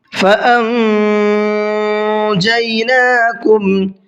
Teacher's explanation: فَأَنْجَيْنَاكُمْ، یہاں پر نون ساکن کے بعد میں جیم ہے تو اخفا کا قاعدہ ہے، ناک میں تھوڑی دیر آواز کو چھپا کر کے پڑھنا ہے